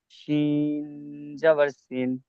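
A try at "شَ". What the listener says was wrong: সিন জবর সিন নয়, সিন জবর সা।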